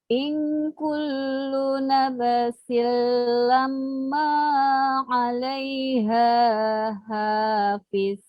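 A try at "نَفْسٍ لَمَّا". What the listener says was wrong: Ya, huruf fa itu jangan dipantulkan bunyinya, Bu ya. Jadi dia di perut bibir ya. Nafsil lamma. Diperhatikan setiap ada huruf yang bertasydid, Bu ya. Jadi di situ pasti ada penekanan bunyi.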